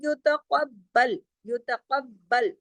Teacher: है, दोनों हाथ साथ साथ आ गए, अहदिहिमा, वलम युतक़ब्बल, युतक़ब्बल, बा पे सख्ती से तशदीद के जैसे जुड़ेगा